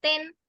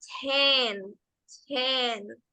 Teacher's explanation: La pronunciación de esa T siendo fuerte, como lo es en el español. En el inglés, la T tiene más aire, suena más suave, y en lugar de sonar como ten, decimos ten, ten, ¿ok? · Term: con aire